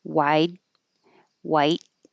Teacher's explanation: So just by themselves, you might not hear much difference because you can't hear the D or the T if I just say wide and white